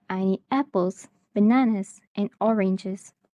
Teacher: it may have a rising intonation for items in the list and a falling intonation at the end